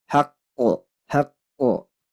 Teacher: kalau mau wakf di sini maka harus diqalqolahkan haqqo haqqo Qalqalah Kubro namanya atau Qalqalah Akbar ya Anna waallahi